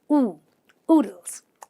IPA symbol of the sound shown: uː